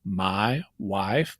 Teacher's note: there's some I in when I say my wife, but there's also some ah in it as well. And it's based on the position of the tongue towards the back of the mouth.